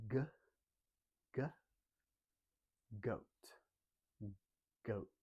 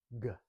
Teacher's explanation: I'm pushing the back of my tongue against my back molar, so the tongue kind of spreads out. G, and blow air out over our tongue.